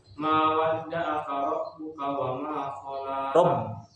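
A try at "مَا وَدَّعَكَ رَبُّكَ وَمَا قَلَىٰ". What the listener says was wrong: Ma wadda'aka bukan rabbuka, tapi rabb masuk di huruf ba. Tasdid.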